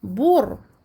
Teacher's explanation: Si vous avez compris la leçon numéro 12, là, je me retrouve avec le premier ra, sakin, auquel je donne une durée moyenne, la durée de bayniyah, bour. Et j'emphatise le ra ici, parce que sakin précédé d'une dhamm.